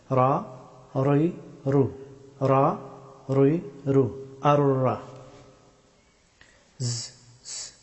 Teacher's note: রা হরফটি উচ্চারিত হয় জিহ্বার সামনের অংশের পিঠ এবং সোজা উপরের তালুর শক্ত অংশ চুইয়ে